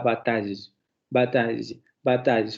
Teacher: al final se va a pronunciar una semi consonante no una semi vocal